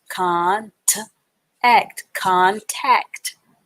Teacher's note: So you run the T and the A sound together to get that ta sound.